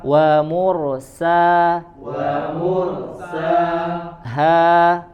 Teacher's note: ha, ya dari aqsal halq, pangkal tenggorokan. Wa mursaha, yang tebal hanya huruf ro, selainnya tipis.